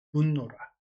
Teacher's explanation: 즉 그래서 디귿이 니은으로 발음됐나 봐요. 용언의 활용에서 디귿의 비음화가 일어난 예이다.